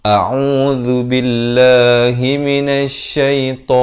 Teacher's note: Lafaznya hamzah di pangkal kerongkong, ain di pertengahan kerongkong, zu di hujung lidah.